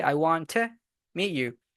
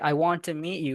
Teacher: Whenever you pronounce the word to, you gotta pronounce it as t, okay, with the schwa sound.